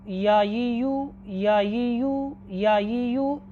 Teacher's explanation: ज़ुबान का दरमियानी हिस्सा और उसके मुकाबिल जो तालु का दरमियान है वहाँ से हरफ या गैर मद्दा अदा होता है। ज़ुबान का दरमियानी हिस्सा और जो उसके मुकाबिल ज़ुबान के दरमियानी हिस्से के जो मुकाबिल तालु का दरमियानी हिस्सा है वहाँ से हरफ या अदा होता है।